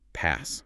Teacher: The vowel is a short a and then you hit the double s. For that s sound, your teeth need to be nearly closed, creating a sharp hiss.